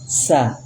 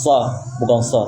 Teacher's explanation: Kalau sin itu istifal. Istifal itu lidahnya turun, enggak naik. Tipis. Sa.